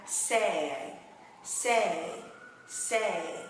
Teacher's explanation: Bên này nguyên âm của nó là âm /e/ và âm /i/ Mình đọc nhanh ha /ei/